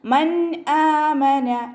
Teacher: നൂൻ സാക്കിനയെ വ്യക്തമാക്കി മണിക്കാതെ ഉച്ചരിക്കുക മൻ ആമന നൂനിന്റെ സൗണ്ടിനെ വ്യക്തമായിട്ട് കേൾപ്പിക്കു ട്ടോ മൻ ആമന ഹംസയുടെ കൂടെ